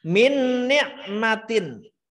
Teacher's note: Min nah, ada gunahnya, ada leburnya. Nun yang satu dengan nun berikutnya dileburkan, dijadikan satu. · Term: idgham